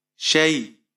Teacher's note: یا لین ہے تو یہاں پر آپ اسے یا کو نرمی سے پڑھیں گے